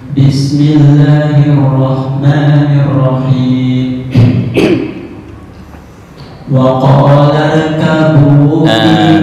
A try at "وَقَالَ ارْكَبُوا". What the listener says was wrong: tafkhim di ra. وقال